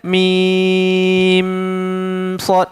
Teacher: Mim bertemu sad mana boleh dengung. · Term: izhar syafawi